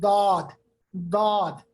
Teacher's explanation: दाद का मखरज है जबान का किनारा, यानी जिसको हमने कहा था हाफई लिसान, जबकि तवाहिन के जड़ के साथ ये मिलता है।